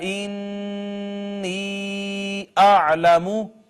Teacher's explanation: نون مشدد ہے اس وجہ سے ہم نے غنہ کیا ہے